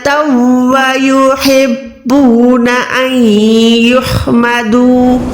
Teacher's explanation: नून साकिन के बाद या है, यहाँ पर भी आपने इद्गाम करना है, ठीक है। इद्गाम यानी गुन्ने वाला इद्गाम करेंगे, उसके बाद वाला हा हलक के दरमियान से अदा होगा।